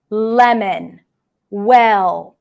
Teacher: you release it along the sides of the tongue. That's how the air comes out for the L sound. It's a voiced consonant. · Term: lateral sound